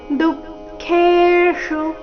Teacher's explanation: ಚರಣದ ಕೊನೆಗೆ ಬಂದಿರುವ ಶು ರಸ್ವ ಬರಬೇಕು ದುಃಖೇಶು ಈ ರೀತಿ ದುಃಖೇಷು ಹೀಗೆ ಅದನ್ನ ದೀರ್ಘ ಮಾಡಬಾರದು ತಥಾ ಮಾನಾಪಮಾನಯೋಹೋ ತಥಾ